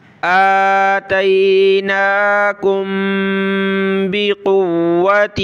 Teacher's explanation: آگے میم کلرفل ہے, یعنی میم کے اوپر یہ جزم, میم ساکن, میم ساکن کے بعد با آ جائے تو ہم نے وہاں ناک میں آواز پیدا کرنی ہے. ٹھیک ہے, غنّے کی طرح.